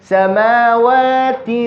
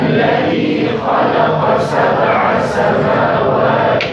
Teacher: The ghunna sound is coming from my nose, not inside my mouth.